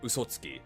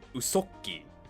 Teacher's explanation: you sort of put like a glottal stop